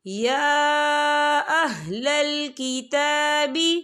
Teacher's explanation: تو ہم اسے 4 حرکت کے برابر کھینچ کے پڑھیں گے